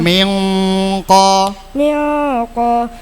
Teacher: nun sukun bertemu qo samar bacanya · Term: ikfa hakiki